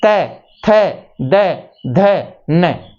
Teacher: जब हमारी जीव्या हमारे दांतों को स्पर्श करके जिस वर्ण का उच्चारण होता है वो दंत वर्ण कहलाते हैं · तो त वर्ग का उच्चारण करके देख लो भाई, त, थ, द, ध, न, हमारी जीभ है वो दांतों को टच हो रही है